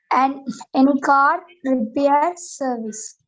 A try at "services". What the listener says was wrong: இல்ல services கடைசில s வருது அந்த s நீங்க உச்சரிக்கணும். திருப்பி ஒருக்கா சொல்லுங்க.